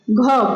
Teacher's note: घ हमारे कंठ के द्वारा बोला जाता है